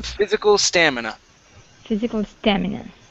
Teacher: stress is at the very beginning